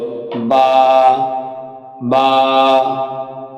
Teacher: দুই ঠোঁট ভিজা জায়গা হইতে 1 আলিফ টেনে পড়তে হবে